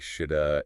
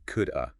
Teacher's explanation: The have part often gets reduced to a schwa sound,